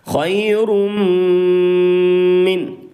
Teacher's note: ادغام مع الغنہ کی آواز کو ناک میں چھپا کر پڑھیں گے، یعنی غنہ کے ساتھ پڑھیں گے.